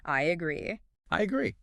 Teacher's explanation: Between the I and the A, you might perceive a tiny Y sound. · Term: intrusive sounds